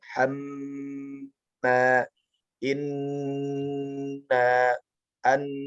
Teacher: Jadi mim dan nun tidak bisa dipantulkan, maka dia ditahan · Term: gunnah musyaddadah